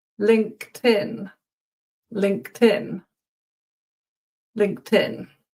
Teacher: it's not a d sound. And yeah, it sort of becomes one word, and it's actually a t